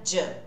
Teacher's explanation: Do com you vira ju. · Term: junção de sons